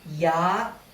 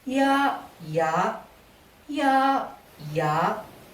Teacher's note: Again, to apply the first tone rule, change the tone of the first word from falling tone ยาก to high tone ยาก. So, to emphasize that it is so difficult, you say ya, ya, ya, ya.